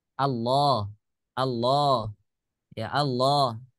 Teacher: orang-orang Arab mengucapkan kalimat Allah itu dengan mad thii dengan dibaca panjang sebanyak dua harakat